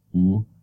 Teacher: it is the high-back tongue position